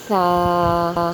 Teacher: سا کی ادائیگی کا طریقہ یہ ہے کہ زبان کی نوک اوپر والے سامنے کے 2 دانتوں کے کنارے سے لگے۔